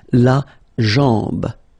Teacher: A-M, when you combine these two, basically it's just like A-N, so it's nasal and it's en